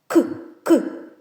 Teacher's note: Твердий. Приголосний, тому що він не співає і звучить твердо